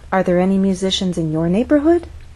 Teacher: unstressed syllables following our voice we'll continue to go up so there's a bit of a drop and then we continue to go up up up up until the end of the question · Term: rising intonation